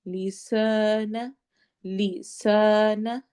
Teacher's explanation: سین سیٹی والی آواز اور الف مدہ، 2 حرکہ لمبا ہوگا